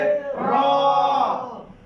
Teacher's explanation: 10 নম্বর মাখরাজ জিহ্বার আগা উল্টো পিঠ তার বরাবর উপরে তালুর সঙ্গে লাগিয়ে